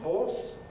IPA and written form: hɔːs (horse)